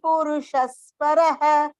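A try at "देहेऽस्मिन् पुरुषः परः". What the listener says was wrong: Purushah paraha. If is coming purushah, because it is pa is there, upadmaniya. Purushah paraha.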